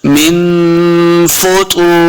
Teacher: फुतूर, अगर रा पे वक़फ़ करेंगे, रा के नीचे ज़ेर वाली तनवीन है, तो यहाँ पे हमने दोनों ज़ेर को साकिन कर देना है, सिर्फ रा की आवाज आएगी।